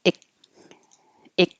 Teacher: you don't really hear the K. It's just ick, ick. Your tongue goes to the k position.